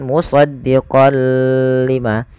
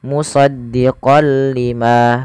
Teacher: Idgham artinya memasukkan bila gunah tanpa disertai dengan gunah. Jadi kita hanya memasukkan saja tanwinnya kepada huruf lam dan tidak ditahan. Tidak dibaca dengan musaddiqol lima, tapi hanya musdiqol lima. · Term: idgam bila ghunah